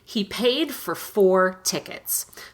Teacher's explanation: in connected speech, for almost, I would say 99% of the time, for is reduced to fur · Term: rushed version of for